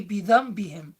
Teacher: Bidhanbihim, there is a nun sakin, but it doesn't have ya, ra, mim, lam, waw, nun after it. It has a ba after it, and because it has a ba after it, it comes under the rule of iqlab, where the nun changes into a mim.